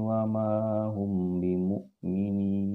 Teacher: Kenapa di sini di hum agak ditahan sedikit? Karena mim mati bertemu dengan ba itu adalah ikhfa syafawi. Jadi harus ada dengung di sini